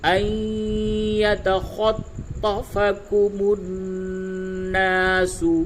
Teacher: نون ساکن کے بعد حروف ادغام میں سے یا آیا ہے۔ تو اس جگہ پہ آپ کو ادغام مع الغنہ کرنا ہے، ان یتخطفکم الناس، اور یہ جو نون دیکھ رہے ہیں اس نون پہ تشدید ہے، اور یاد رکھیے جب بھی قرآن شریف میں نون پہ اور میم پہ تشدید ہو تو اس جگہ پہ غنہ کرتے ہیں۔